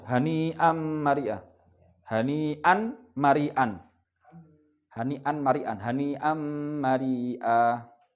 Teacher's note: Tasdid. Jadi nun sukunnya hilang ya. Nun sukunnya suara nun sukun hilang. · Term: idgham